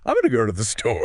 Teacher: The beat falls on go and store.